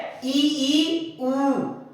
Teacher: संवृत स्वर में सबसे कम मुंह खुलेगा, मतलब 25%